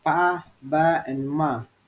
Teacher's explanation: Bilabial sound pa, ba, and ma. Consonant sounds which are produced by putting two lips together